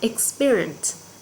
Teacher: Và khi nó là số ít cô sẽ đọc là experience. Nó sẽ nhấn ở âm tiết thứ hai.